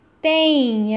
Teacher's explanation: Um I semivogal acompanhando o E.